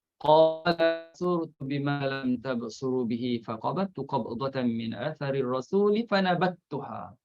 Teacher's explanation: Perbincangan dalam bab ini ialah berhubung dengan huruf mati yang diidgham ke dalam huruf selepasnya. Antaranya ialah diidghamkan dal dalam ta. Ini dalam satu kalimah.